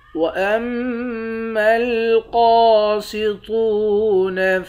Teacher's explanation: میم مشدد پر غنہ کریں گے، قاف کو اور طاء کو، ان دونوں حرف کو موٹا پڑھیں گے، یہ دونوں موٹے حرف ہیں۔